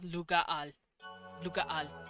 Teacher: over time their language just started cutting off that A.